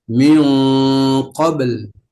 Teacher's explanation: lam yang tadinya berharokat kasroh min qobli ketika di waqaf harus disukun, maka berkumpullah dua sukun